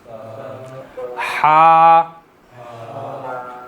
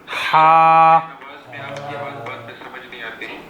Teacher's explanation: जैसे आप ठंडा पानी पीते हैं उसके बाद आपके हलक से जो आवाज़ निकलती है वो आवाज़ जो है वो हा की है